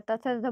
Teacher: त थ द बोल के देखिए, आपका दाँत से टच होगा आपका जीभ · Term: त वर्ग